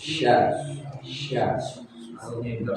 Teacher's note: makhrajnya di lidah yang bagian tengah